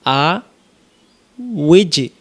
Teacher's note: এখানে লক্ষ্য করেন হামজা জবর আ, ওয়াউজের উই, ওয়াউজের উই, ওয়া অক্ষর দুই ঠোঁটের মাঝখানের ফাঁকা থেকে পড়তে হয় ওয়াউজের উই মিলবে জিমের সাথে উইজ, তাহলে উচ্চারণ হবে আ উইজ।